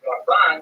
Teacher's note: Rambam is pronounced with the emphasis on the first syllable, Rambam, and Ramban is pronounced with the emphasis on the second syllable